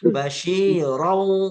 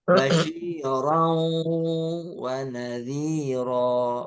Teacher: Idgham dulu, masuk dulu, baru dengung.